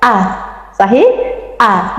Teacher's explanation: Kita tekan supaya dia berbeda dengan bunyi hamzah. Kalau kita bunyikan hamzah tadi seperti ada suara tertahan ya.